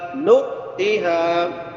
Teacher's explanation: نون کے بعد حمزہ ہے، جھٹکا دینا ہے یہاں پہ